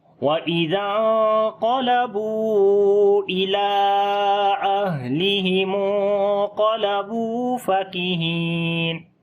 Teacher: اور جب یہاں آہ کریں گے تو ہا کے اوپر صفت ہمس ہوگی، سانس کا جاری کریں گے